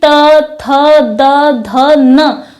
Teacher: और फिर यहाँ बात करें कि दंत वर्ग में कौन कौन से वर्ण आते हैं, अब आप यहाँ बोलकर प्रयास करें कि त, थ, द, ध, न, तो हम पाएंगे कि हमारी जो जीभ है वो हमारे ऊपरी जबड़े के दांतों को अंदर से स्पर्श कर रही है। तो जिससे हमें पता चला कि त वर्ग के जो व्यंजन है वो दंत को स्पर्श करते हैं और इसी कारण इन्हें दंत वर्ग में रखा गया है।